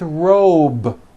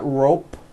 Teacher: also has a voiced B ending it's not rope with an unvoiced P it's robe